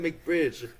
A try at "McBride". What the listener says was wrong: Bridge has a G in it. Where do you see a G in his name, bro? McBride.